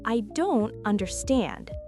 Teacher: Stress the stand part. And you can let your voice go up a little at the end to show you need help.